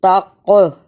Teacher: یہاں قاف پر جزم ہے اور قاف حروف قلقلہ میں سے ہے، یعنی اس حرف کو ہلا کر پڑھنا ہے۔